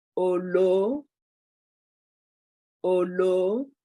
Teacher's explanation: The vowel, the diacritics marks on olo are falling, both O at the beginning and O at the end.